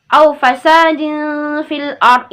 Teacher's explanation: Ya, nah ini masuk dalam hukum bacaan nun sukun karena kasratain bertemu dengan huruf fa itu dibaca didengungnya 2 harakat samar-samar. Dia masuk dalam hukum ikhfa halqi.